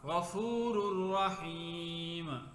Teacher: ایسے غفور الرحیم، اب یہاں پہ غفور پہ بھی یہ وہی تنوین ہے کہ نون تنوین کے بعد لار میں سے یہاں پہ را آ رہا ہے، تو یہاں پہ ادغام تو ہوگا لیکن غنہ نہیں ہوگا